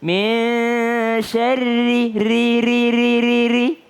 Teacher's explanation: Tapi kalau baris bawah. Ra-nya jadi tipis.